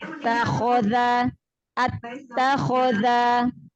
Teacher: Huruf kho adalah huruf istilah, huruf tebal, angkat pangkal lidahnya. Makharijul huruf kho dari pangkal tenggorokan bagian atas. Huruf kho adalah salah satu huruf tebal, jadi pangkal lidahnya diangkat ketika mengucapkan huruf kho.